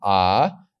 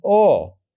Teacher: one of them is short and one of them is long the long one is the one that we pronounce as an ah and the short one is the one we pronounce as an O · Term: kamats